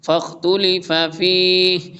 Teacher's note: فِيهِ جب وقف کریں گے ساکن کر دیں گے